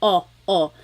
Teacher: I think of it like having a ball in your mouth your tongue gets kind of pushed back and down a little bit and the inside of your mouth is open and wide